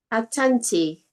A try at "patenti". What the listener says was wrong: Not A. Yes, it is P. Patenti. Patenti.